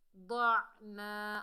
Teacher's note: ضاد حروف استعلا میں سے ہے، موٹا ادا ہوگا ، عین کو حلق کے درمیان سے ادا کریں گے، الف